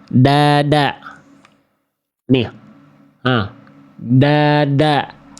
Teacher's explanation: Saya pribadi melafalkan huruf D itu ujung lidah bukan ke pangkal gigi dari atas tapi ke langit-langit. Jadi lebih dalam kalau saya pribadi nih.